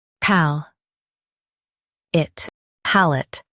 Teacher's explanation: Stress pal and keep it short.